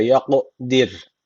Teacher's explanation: ra harfi burada ince okunacak